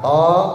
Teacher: To-nya 2 harokat, dia mad harfi mukhaffaf, 2 harokat doang